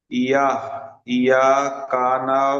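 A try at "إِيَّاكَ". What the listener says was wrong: হামজা ইয়াজের ই, তাহলে ইয়াকে একটুখানি শক্ত করে পড়তে হবে।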